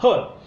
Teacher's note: अगर आप ह को सही तरीके से बोल के देखेंगे तो कंठ के भी थोड़ा सा नीचे से, मामूली से नीचे से आपके पास ह का उच्चारण किया जाता है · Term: काकल